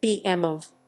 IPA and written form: ˌbeːʔɛmˈveː (BMW)